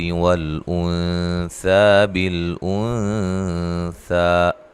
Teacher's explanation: نون ساکن کا یہاں اخفا ہے، ٹھیک ہے، باریک اخفا ہے